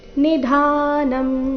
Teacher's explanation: ಎಲ್ಲಾ ಅಕ್ಷರಗಳು ರಸ್ವ ನಿಧಾನಂ ಧ ಮಾತ್ರ ದೀರ್ಘ